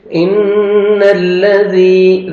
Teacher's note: نون مشدد ہے غنہ کریں گے نوز میں ساؤنڈ لے کے جائیں گے